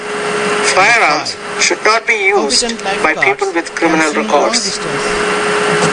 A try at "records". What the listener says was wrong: And that last word, it depends how you're using it. You're using it here as a noun, so the stress is on the first syllable, by people with criminal records. You said more records, so put stress on that first syllable, not the second.